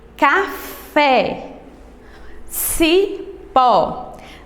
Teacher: o acento agudo ele tem um timbre mais aberto